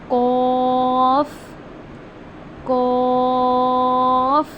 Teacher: जो हमारी जुबान की जड़ है उसको हम तालू के नरम हिस्से से अदा करते हैं। यानी कि अपर जो आपका माउथ का जो पार्ट है वहां से आपने अदा करना है इसको ऐसे कॉफ कॉफ यानी कि नरम हिस्से से।